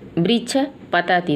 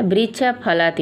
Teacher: तो उपधमानी का भी उच्चारण स्थान ओष्ठ होता है